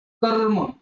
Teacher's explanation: कर्म, बघा कर्म, सूर्य, सूर्य येतात बघा. आधी र येणार आहे, त्याच्यानंतर व्यंजन असतं, त्यावेळेस रचा उच्चार अर्धा होतो, अपूर्ण उच्चार होतो, मग तो रचा लिहित असताना जोडाक्षरामध्ये तो रफार लिहिला जातो. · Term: रचा अपूर्ण उच्चार